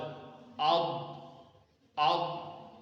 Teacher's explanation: اس میں قلقلہ نہیں ہوگا، اس کو پر کر کے پڑھا جائے گا،